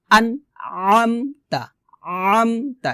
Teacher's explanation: আইনটা কিন্তু সাধারণভাবে বলা যাবে না, আইনটাকে গলার মাঝখান থেকে চাপ দিয়ে বলতে হবে